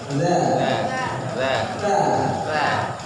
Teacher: ujung lidah bersentuhan dengan gigi seri